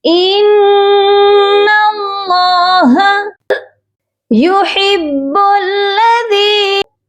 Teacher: ہا کی آواز حلق سے آئے گی، با مشدد ہے، ہا کو با کے ساتھ سختی سے ملا کر پڑھیں گے اور با کو لام مشدد کے ساتھ ملایا جائے گا۔